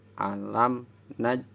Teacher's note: Nah, sukun itu mati. Ketika ada huruf jim mati, hukum bacanya qalqalah. Qalqalah itu huruf yang mantul. Jadi suara jimnya itu harus mantul.